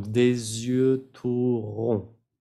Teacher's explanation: la T no se pronuncia y la D tampoco